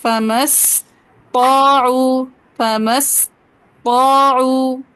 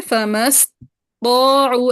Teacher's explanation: ایسے طا پہ تھوڑا سٹے کیجیے گا تاکہ تشدید واضح ہو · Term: طا کی تشدید